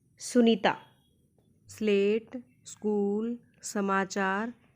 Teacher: जब हम स का उच्चारण करते हैं तो हमारी जीभ हमारे मुख के दंत्य भाग को छूती है, तब स का उच्चारण स्थान जो क्या है, दंत्य है। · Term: दंत्य व्यंजन